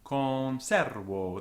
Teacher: The last O carries no stress, but it's long.